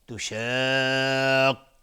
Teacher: مد لازم کلمی مثقل به مقدار 6 حرکت لازمه که مد داده بشه